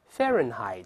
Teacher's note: 注意第一个▁H▁不发音啊